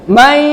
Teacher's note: May langsung nunnya langsung lebur kepada huruf ya dengan disertai dengung. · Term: idgham bi gunnah